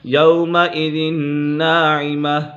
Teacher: نون مشدد میں ہمیشہ غنہ ہوتا ہے